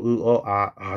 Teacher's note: 아모음이 제일 크게 입이 벌어진 저모음이에요